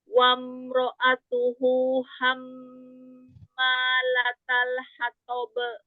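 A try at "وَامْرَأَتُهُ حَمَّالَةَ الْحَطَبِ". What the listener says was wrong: Wam mim sukun kasih bainiyah. Wamro'atuhu hammalatal hatab. Ya, dilatih qalqalahnya jangan diakhiri dengan hamzah ya.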